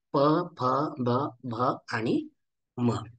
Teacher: उ, ऊ, प, फ, ब, भ, म यांचं उच्चारण करून आपण पाहू शकता की दोन्हीही ओठ एकमेकाला चिटकतात.